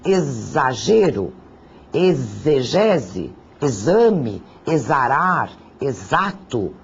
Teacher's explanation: o x pode ter um som do fonema Z eu grafo com o x Mas o que eu ouço é o som do Z Vejam o caso de exagero exegese exame exarar exato todos eles